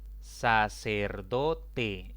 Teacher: sacerdote es una palabra de cuatro sílabas la mayor intensidad recae sobre la penúltima sílaba contando de izquierda a derecha sin embargo como termina en vocal